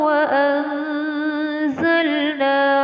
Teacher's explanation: Terdapat nun mati bertemu dengan huruf za, dinamakan hukum bacaan ikhfa. Ikhfa cara membacanya adalah dengan samar.